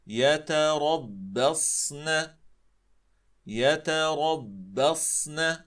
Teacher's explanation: هذان الحرفان مرققان، را مفخمة، ب مرققة، الصاد مفخمة، والنون مرققة. لاحظوا، مفخم مرقق مفخم مرقق وهكذا. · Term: تخليص الحروف